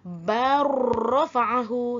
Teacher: cara bacaan yang betul ialah bar rafa'ahu, seolah-olah lam tu tak wujud. Sebab bunyi lam dah dimasukkan ke dalam diidghamkan. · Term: idgham mutaqaribaini